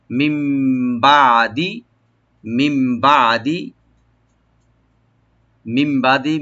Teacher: নুন সাকিনের পরে যেহেতু বা আসছে এগুলো আমরা একলাপ করবো, ইয়ানি নুন সাকিনটাকে মিমের সাথে চেঞ্জ করে আমরা গুণা সহকারে পড়বো